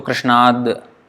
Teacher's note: Actually it's Krishnat. But because there is a vowel next, so Krishnad, the voiced sound will come out.